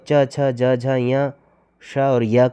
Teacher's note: तालव्य जो उच्चारण स्थान है वह च ञ श और य का है।